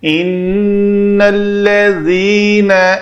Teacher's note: نون جب بھی مشدد آئے اس کے اوپر غنہ کرنا ہے۔ ان الذین، ذال کا مخرج ہے، دونوں دانتوں کے درمیان زبان جو ہے وہ باہر آئے، اندر رہے گی، دانت جڑ جائیں گے تو وہ زا ہوگا۔